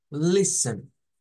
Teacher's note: la T es muda en esta palabra